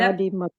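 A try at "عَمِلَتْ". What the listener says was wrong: आमिलत इसमें आलिमा और आमिला जो है ना, दोनों आपस में मीम और लाम का डिफरेंस जो है वो उनका क्रैश भी होता है, इसलिए आप सबने ध्यान रखना है और क्विज भी बहुत ध्यान से आप सबने करना है ताकि गलती का इम्कान ना हो।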